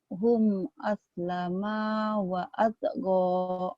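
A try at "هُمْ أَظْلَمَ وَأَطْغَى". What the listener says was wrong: bagus tapi ma-nya pendek. Hum azlama wa lama wa altogo. Kalau kakak tadi azlama panjang, jangan pendek ya.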